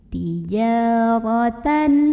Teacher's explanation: Ro-nya dibunyikan secara tafkhim karena ro berbaris dan barisnya di atas ya. Maka bacanya tebal, pangkal lidah dinaikkan.